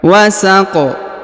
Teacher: kemudian huruf q dipantulkan atau dikolqolahkan